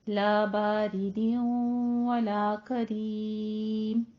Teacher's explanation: रॉ दोनों जगहों पे कसरा के साथ है, बारीक ही पढ़ा जाएगा